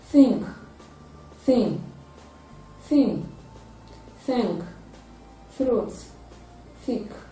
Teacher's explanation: back of the upper teeth therefore it is a data sound it is a voiceless dental fricative sound · It is produced with the tip of the tongue raised to the back of the upper teeth. Therefore, it is a dental sound.